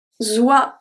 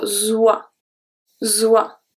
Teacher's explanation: The S in the middle is pronounced as a Z because it's between two vowels.